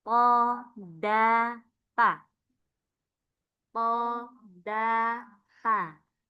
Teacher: Setelah hurufnya ro masuk ke ujung lidah lisan mengenai pangkal gigi seri atas